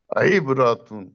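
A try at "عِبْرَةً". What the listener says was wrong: عیب. رو کو موٹا کرنا تھا آپ نے بتایا. عیب روتن، عیب روتن.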